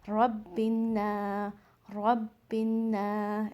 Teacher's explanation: जिस लेटर के ऊपर फ़तहा होगा, अलिफ से पहले जो भी लेटर होगा और उसके ऊपर फ़तहा होगा तो उसको, उस लेटर को हमने 2 सेकंड स्ट्रेच करना है। जैसे यहाँ नून के ऊपर फ़तहा है, उसके बाद अलिफ है तो ये अलिफ मद्दी है, तो हमने नून को यहाँ स्ट्रेच करके पढ़ना है